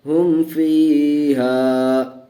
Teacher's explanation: میم ساکن کے بعد فا آیا ہوا ہے، با اور میم کے علاوہ فا ہے، اس لیے میم کو ظاہر کر کے پڑھیں گے. ہم فیہا، ہا میم پیش ہم، فا یا زیر فی، ہم فی، ہا لف زبر ہا، ہم فیہا. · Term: اظہار شفوی